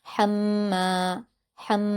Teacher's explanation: मीम पर तशदीद है तो हा से मिलाकर पढ़ेंगे। मीम पर जब तशदीद होती है तो उसको गुना के साथ पढ़ा जाता है। और मीम पर अलिफ मद्दा भी है तो दो हरकात खींच कर पढ़ेंगे। · میم پر جب تشدید ہوتی ہے تو اس کو غنہ کے ساتھ پڑھا جاتا ہے، اور میم پر الف مدہ بھی ہے تو 2 حرکات کھینچ کر پڑھیں گے.